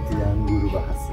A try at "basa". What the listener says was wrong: Not bahasa in Bali. Bahasa. When you said language or bahasa in Bali, bahasa. You minus a ha. Just use bahasa. Without ha. More simple, bro.